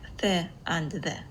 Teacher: the consonant sounds th and the are produced by the tip of the tongue, either on the upper teeth or between the upper and lower teeth